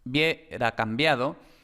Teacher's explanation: Y aquí tenemos la M, que por supuesto pues es M, y luego la B permanece oclusiva porque va justo detrás de nasal